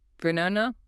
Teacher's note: No, that requires way too much muscular effort. We only stress the middle syllable. The first and last syllables completely deflate into schwas.